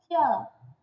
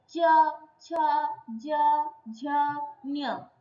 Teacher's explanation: मुंह के ऊपर च जिधर लग रहा है उसको तालु कहते हैं। देखो च, छ, ज, झ, ञ सेम जगह में टांग लग रहा है। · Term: तालव्य वर्ण